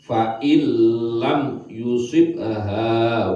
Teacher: Huruf idgham bila hunah ada dua, lam dan ro. Suaranya nun mati dihilangkan malah langsung masuk ke lam.